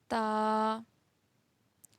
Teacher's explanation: زبان کی نوک جب اوپر کے اگلے 2 دانتوں کی جڑ والے حصے سے ملے تو ادا ہوتا ہے تا